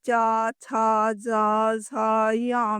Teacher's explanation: च वर्ग यानी च, छ, ज, झ, य में हवा तालु को स्पर्श करती है।